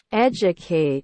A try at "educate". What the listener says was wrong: Nó là chu á, con chứ phải đu đâu nha. Educate.